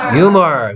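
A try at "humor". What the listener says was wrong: 휴머 아니고 유머 H 소리 안 나고요.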